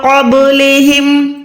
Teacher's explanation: با ساکن ہے یعنی آواز کو لوٹائیں، یہاں پر حروف قلقلہ ہے، با جو ہے حروف قلقلہ میں سے ہے، قوف تو با جیم دال، یہ 5 حروف ہوتے ہیں۔